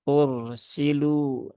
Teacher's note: ro sukun ya yang didahului harokat dhammah, maka di situ roknya terbaca dengan tebal ya.